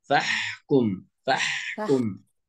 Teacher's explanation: حرف الحاء لا بد ان يظهر هنا ليس حرف هاء